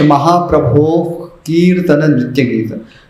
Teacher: विसर्ग के यहाँ क्योंकि आगे क है तो एक जीवा मूलीय ध्वनि उत्पन्न होती है। इसको क्या कहेंगे, गले से थोड़ा सा जैसे आप खांसते हैं ना, वैसी एक ध्वनि निकलती है।